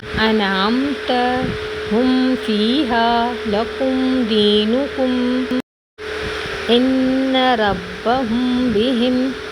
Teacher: میم ساکن کو ظاہر کر کے بغیر گنہ کے ہم تھوڑا سا جلدی پڑھیں گے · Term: میم ساکن کا اظہار